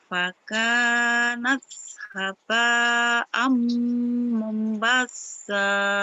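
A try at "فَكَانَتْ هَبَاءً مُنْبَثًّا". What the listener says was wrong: Mom ditahan. Mumbassa. Kurang nahan momnya. Lagi.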